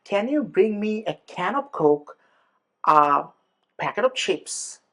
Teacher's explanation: ওই কমা যদি লিস্ট আকারে হয়, তাহলে it will become rising. For example, if I tell you, hey, can you bring me a can of Coke, a packet of chips, and let's say chocolate, right?